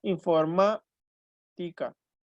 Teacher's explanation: La sílaba tónica de la palabra informática es ma